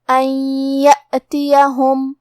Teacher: آخری میں میم ساکن ہے، یہاں میم کا حکم ہے اظہار شفوی. ہم حرف المیم کو ظاہر کریں گے اور بغیر غنہ سے یہ حکم کو ادا کریں گے